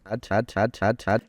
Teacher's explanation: it's actually devoiced and come out as a T